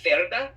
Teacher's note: if you've ever wondered why I lisp when I pronounce certain Spanish names, I'm trying to be respectful to the Castilian dialect of Spanish